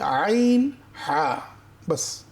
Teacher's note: কন্ঠনার মাঝখানে যদি চাপ দেই আইন হা